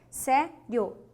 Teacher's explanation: você tem o i sendo semivogal mais o o sendo a vogal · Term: ditongo crescente